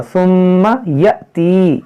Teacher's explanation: اس حمزہ میں ساکن جھٹکا ہوگا